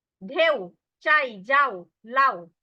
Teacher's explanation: প্রত্যেকটা যৌগিক স্বরধ্বনির পরে যে অংশটা থাকবে সেটা কিন্তু অর্ধ স্বরধ্বনি। আর অর্ধ স্বরধ্বনি সম্পূর্ণরূপে উচ্চারিত হয় না, টেনে উচ্চারণ করা যায় না, ওখানেই থেমে যেতে হয়। · অর্ধ স্বরধ্বনি পুরোপুরি উচ্চারিত হয় না, ওখানেই থেমে যাবে।